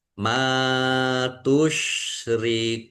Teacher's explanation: Kafah wawu sukun mad thobi'i. Tetapi karena di akhir kata maka menjadi mad arid lisukun. dibaca panjang boleh 6 4 atau dua harakat. · Mim fathah alif mad thobi'i panjang dua harakat.